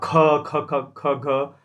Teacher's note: महा का मतलब होता है बहु ज्यादा मुंह से हवा बाहर आना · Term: महाप्राण